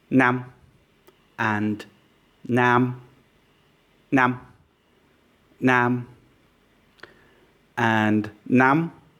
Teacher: in Vietnamese, two vowels which are the same can have different lengths.